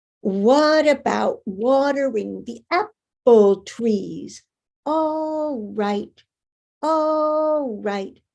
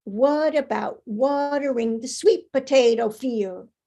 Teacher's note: The stress of the syllable determines the rhythm of the sentence. You know, we've got apple trees and we've got sweet potato field, you know, same rhythm, but the unstressed syllables are squeezed in there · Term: stress-timed language